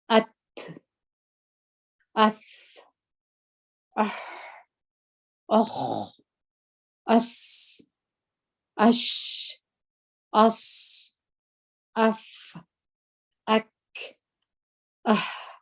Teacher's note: د همس پر تور باندې چې ورغندۍ وي د دوی سره د دوی اواز په خوله کې پاتېږي هوا د خولې څخه راوځي